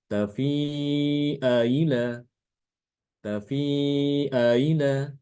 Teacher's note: Kalau tahqiq itu membaca hamzah itu sesuai makhrajnya, namun untuk tashil dia tidak dibaca sesuai makhraj, tapi tengah-tengah antara makhraj hamzah dengan huruf mad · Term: bacaan tasil